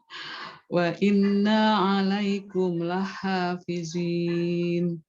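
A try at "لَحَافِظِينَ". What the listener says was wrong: Masih zai. Ujung lidahnya udah keluar belum? Ujung lidahnya udah keluar belum? Ya, kayak huruf zal. Zal dengan lo tebal tipisnya aja kalau lo. Tapi lidahnya tetap keluar sama.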